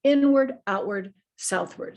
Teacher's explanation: they're emphasizing that it's a schwa pronunciation it's a neutral pronunciation · inward outward and southward are all stressed at the beginning that first syllable is stressed inward outward southward so this part then becomes unstressed and more